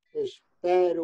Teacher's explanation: Espero por verbo da primeira, espero o e da raíz e aberto